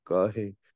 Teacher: ਕਾਹੇ ਪੂਰਾ ਲੰਮਾ ਨਹੀਂ ਕਹਿਣਾ, ਉਵੇਂ ਸੰਕੋਚ ਕੇ ਜੇ ਕਾਹੇ, ਕਾਹੇ ਕੱਕਾ ਵੀ ਸੰਕੋਚ ਲੈਣਾ, ਹਾਹੇ ਸਿਹਾਰੀ ਵੀ ਸੰਕੋਚ ਲੈਣੀ, ਕਾਹੇ ਕਹਿ ਜੀ।